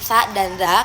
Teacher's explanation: dental, yaitu bunyi dari lidah dan gigi